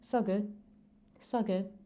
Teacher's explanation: if you're saying it even faster, you may not even hear that final D. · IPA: [sagʊd]